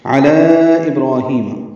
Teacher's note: علی میں لام کو 4 حرکات لمبا کرنا ہے، مد منفصل